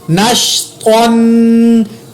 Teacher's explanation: یہاں پر میں نے طا کے اوپر تنوین کی وجہ سے غنہ کیا